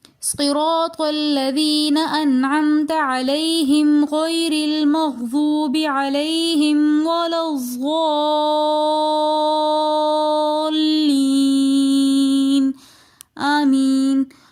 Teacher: صراط الذین انعمت میں نون ساکن کے بعد حروف حلقی میں سے عین آ رہا ہے تو لہٰذا یہاں پر ہم غنہ نہیں کریں گے کیونکہ یہاں پر اظہار ہو رہا ہے۔